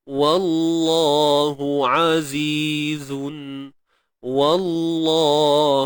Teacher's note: Sebab sebelum dia tu ada huruf yang berbaris atas. Wa nipis. Kalimah Allah baru tebal.